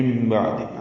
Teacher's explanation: اوپر لکھ دی گئی ہے، اقلاب ہو رہا ہے، من بعد عین وسط حلق سے ادا کریں گے